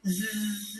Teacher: when you do zzz, there's a vibration